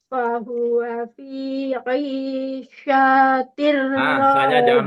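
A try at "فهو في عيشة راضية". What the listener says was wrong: Oh, sya-nya panjang ya. Pendek, pendek. Ini hanya tulisannya saja.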